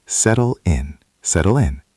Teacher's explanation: The double t in settle sounds like a soft duh in American English or a crisp tu in British English. But the important part is the link.